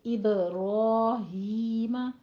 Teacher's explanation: ابراہیم با پہ قلقلہ کرنا ہے، اور را اور ہی دونوں پہ 2 کاؤنٹ کرنے ہیں۔